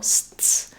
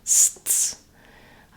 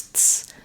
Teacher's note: my tongue is starting in the S position, it's stopping the air for the T, and then bursting back into the S position